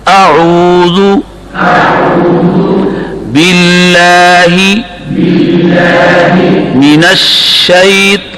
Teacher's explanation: اب شین کی آواز منہ کے اندر پھیل گئی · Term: تفشی